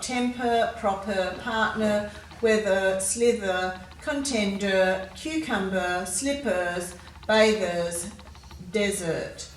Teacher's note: in these words we've got the er ending er it's a bit of a schwa sound · usually a schwa sound which is a bit of a grunt sound